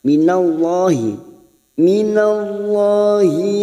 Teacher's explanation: Lam jalalah di sini kita baca tafkim karena sebelumnya ada fathah.